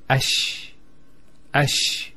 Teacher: Ash ash the actually points of articulation of the lamb and the sheen are very close to each other and because they're very close what happens is this lamb is not pronounced and what happens instead is the lamb is pronounced as a sheen. So there's a actually a shed here.